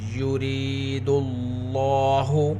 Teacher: را کے نیچے زیر، را کو باریک پڑھیں گے